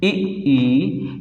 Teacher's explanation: तालु से कौन से स्वर उच्चारित होते हैं, इ, ई, इन्हें हम तालव्य स्वर बोलेंगे